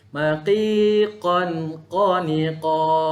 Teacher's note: Maqi dia tebalkan sedikit. Maqiqan qaniqa. Tebalkan pada huruf qaf.